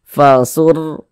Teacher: Huruf ra sukun sebelumnya harokat fathah, atau di sini yang kita temui huruf ra sukun sebelumnya harokat dhammah, maka huruf ra-nya itu dibaca tebal, baca tafkhim. Jadi ini tebalkan huruf ra-nya.